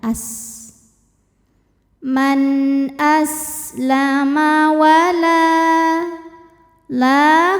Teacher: cara membaca huruf lamnya adalah kita panjangkan dua harakat saja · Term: Mad Thobi'i